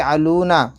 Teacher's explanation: پڑھیں، ما يفعلون، یہاں پر بھی علون، لام واو پیش لو، واو ساکن سے پہلے پیش ہے، واو مدہ تھوڑا کھینچ کر پڑھیں